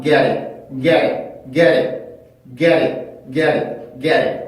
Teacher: 이때는 T 발음이 플랩이 먼저 됩니다